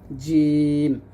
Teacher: জিম দাঁতে লাগানো যাবে না জিহ্বার মধ্যখান তার বরাবর উপরে তার সঙ্গে লাগবে